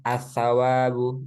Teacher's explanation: maka Hamza wasnya itu pasti dibaca a semua enggak mungkin dibaca i engak mungkin di baca u pasti asawabu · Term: Hamzah wasal